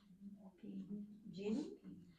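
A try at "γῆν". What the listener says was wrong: Close. It's g. Greek doesn't have a j sound. It's just g.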